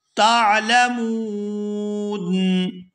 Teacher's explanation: اندادا وانتم، وانتم تعلمون، یہاں وقف کریں گے اور وقف کی صورت میں نون کو ساکن کر دیا جائے گا اور نون ساکن ہونے کی وجہ سے یہاں پر مد ہوگی